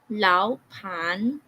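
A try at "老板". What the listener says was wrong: Wala nga. May hangin sa'yo. Lao pan. I want you to pronounce it without hangin.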